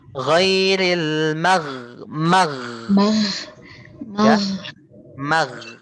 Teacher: kamu rapatkan lidahnya mag tapi enggak usah rapat-rapat banget karena kamu kamu sediakan Space sedikit untuk udaranya keluar soalnya kalau kerapatan itu bukan gho namanya itu huruf q